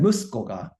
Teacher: You're stressing on the mu and coming back down on the ko.